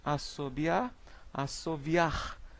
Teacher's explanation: Então, nas classificações, nós temos aqui a transformação por degeneração, que é o nome dado ao processo de transformação do fonema B em fonema V